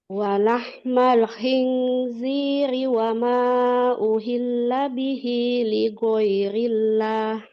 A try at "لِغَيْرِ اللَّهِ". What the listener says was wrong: Nah, huruf G ini jangan digo, ligo suaranya mengalir. Lighoirillah, ghairillah, lighoiri.